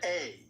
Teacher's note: that A sound is called a diphthong, and it's actually two sounds.